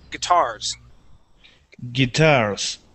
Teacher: we put the accent at the end of the word guitars guitars good one more time G and we're gonna and we're · So we put the accent at the end of the word.